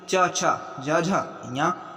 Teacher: तो ये होगा तालव्य ध्वनि